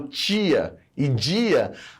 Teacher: Quando eu falo tia e dia, acontece um processo de palatalização